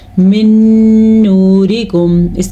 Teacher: من نورکم، اس قاعدے کا نام ہے ادغام بالغنہ، یہ نون ساکن کے بعد یا تنوین کے بعد یا میم واو نون ان 4 حروف میں سے کوئی سا بھی ایک حرف آ جائے تو ان کو آپس میں ملا کے بھی پڑھتے ہیں اور غننے کے ساتھ بھی پڑھتے ہیں